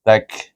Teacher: Ta digabungkan kaf. Kaf itu hamas, ta pun hamas.